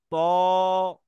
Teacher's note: মোটা হরফ, দু ঠোঁট গোল করে উচ্চারণ করো